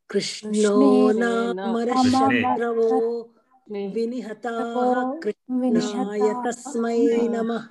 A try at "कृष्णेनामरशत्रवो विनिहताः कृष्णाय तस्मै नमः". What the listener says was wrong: It is not Krishna, Krishne.